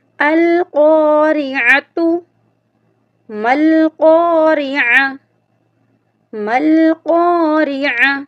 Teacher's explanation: 2 نقطوں والی قاف ہے، اس کو ہم موٹا کر کے پڑھیں گے